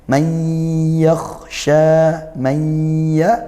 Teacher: nun sukun bertemu ya, idgham bi gunnah dibaca masuk ke ya dan juga dengung